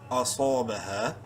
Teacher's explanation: بربوۃ عصا، با زبر با، ہا الف زبر ہا، الف مدہ ہے، ہا کو ایک الف کے برابر لمبا کریں گے